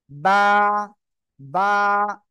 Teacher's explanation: দুই ঠোঁটের ভিজা অংশ থেকে আমরা উচ্চারণ করব